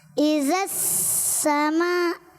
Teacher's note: सीन दांत मिलाएंगे, सीन में दांत मिलाएं दोनों, सीन सीटी के साथ